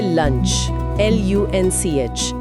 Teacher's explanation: जब L बोलते हैं तो जीभ ऊपर दांतों के पीछे होती है और अगले ही पल जब UNCH की आवाज आती है तो जीभ सीधे नीचे आ जाती है। यानी उसे बीच रास्ते में धीरे धीरे नीचे आते हुए नहीं दिखा सकते।